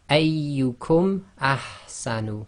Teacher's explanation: there's no ghunna, there's no assimilation going on, and there's no hiding. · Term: clear pronunciation